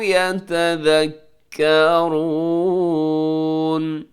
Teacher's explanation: يَتَذَكَّرُونَ کو ذال کو زا نہ پڑھیے گا